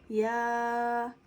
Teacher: یا کو ہم زبان کے درمیان اور تالو کے درمیان سے ادا کریں گے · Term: حرف شجریہ